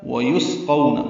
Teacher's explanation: واو ہونٹوں کی نا تمام گلائی سے ادا کریں گے، دو واو ہیں اس میں، سین ساکن ہے، اس میں ہم سے قاف پر ہے، قو وولین ہے، معروف طریقے سے پڑھنا ہے۔